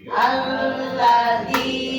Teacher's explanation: Alladzi panjang dua harokat.